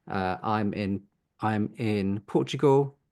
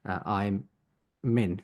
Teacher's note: It would connect together because it links together to make I'm min. So a bit like there's a min sound there. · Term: connected speech